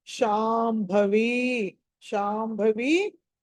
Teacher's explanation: షా తర్వాత అనుస్వారం ఉంది, తర్వాత భా ఉంది కాబట్టి మ అనాలి